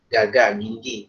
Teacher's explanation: kalau G di kita itu dia antara pertengahan tenggorokan dengan ujung tenggorokan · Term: huruf G